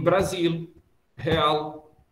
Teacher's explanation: eu quase sempre pronuncio os L's, no meio ou no fim. Se você fosse fazer uma transcrição fonética de uma fala minha, você teria de ter o cuidado de colocar L em Brasil, real, porque eu os pronuncio, e não botar um W ou um L cortadinho no meio, com um tio.